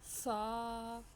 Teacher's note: سا کو ہم جب پڑھنا ہے تو سیٹی کی آواز نہیں آنی چاہیے